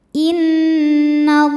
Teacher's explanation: ada hukum ghunah musyaddadah karena nun bertasydid. Cara bacanya dengung